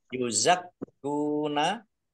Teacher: kafnya dibaca dobel ada tasdidnya. Biar tampak dobel maka ditekan.